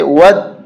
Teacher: اس دال مشدد کے اندر ایک دال اور چھپا ہوا ہوتا ہے، دال ساکن، کیسے ود، ایک یہ آ گیا دال، اور دو یہ دوسرا آ گیا، ودو۔